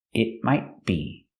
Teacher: The T in might is also a stop T.